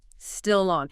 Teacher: That final consonant sound naturally attaches to the following vowel sound. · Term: linking